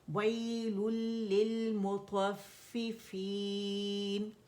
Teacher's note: غننے کے بغیر ہوگی، مکمل ادغام ہوگا، نون کی کمپلیٹ آواز جو ہے لام کے اندر چلی جائے گی، تو نون نہیں پڑھا جائے گا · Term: ادغام تام بغیر غنہ